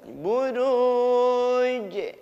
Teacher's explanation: Pantulannya di akhir ada pantulan tapi jangan terlalu kuat.